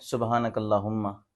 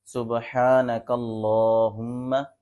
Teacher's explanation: لفظ اللہ کو موٹا بھی پڑھیں گے، اس کے اوپر جو کھڑی زبر ہے اس کو بھی تھوڑا کھینچ کے پڑھیں گے۔